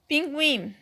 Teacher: O U e o I eu também falo junto, não se separa o U e o I, portanto, ditongo.